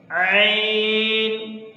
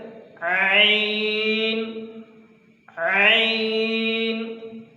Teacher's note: نکالیں گے گلے کے درمیان سے، عین. تو جس سے ادا نہ ہو رہا ہو وہ یہاں پر گلے کے درمیان میں ہلکا سا ہاتھ رکھے گا، ہلکا سا اس کو پریس کرے، عین عین.